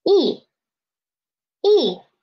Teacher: The last one is fourth tone. Drop rapidly.